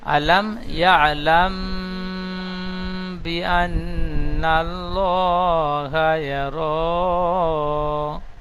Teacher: আলাম ইয়া আলাম, এই লাম মিম জবর লাম, দ্বিতীয় যে লাম মিম জবর লাম, এটি একালিফ গুন্না হবে। মিম সেখানে পরে বা এসেছে, তাই মিমকে একালিফ গুন্না করে পড়তে হবে, একে ইকফায়ে স্বাভাবিক বলে।